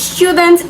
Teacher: the word is student and it is stressed on the first syllable